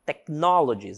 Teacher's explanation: Technologies, essa palavrinha, esse H não tem som, certo? Technologies, ele está aqui, mas o som de H ele não aparece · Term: H silencioso